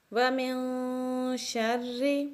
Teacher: اب را کے نیچے زیر ہے تو اس لیے را کو باریک پڑھیں گے